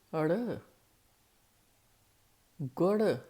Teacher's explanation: ਜਦੋਂ ਜੀਭ ਸੱਟ ਜਿਹੀ ਮਾਰਦੀ ਆ ਉਦੋਂ ਅਸੀਂ ਅੜਾ ਪਾਉਣਾ